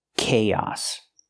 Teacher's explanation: We link the two vowels with the y sound like yes and yesterday. Together, chaos.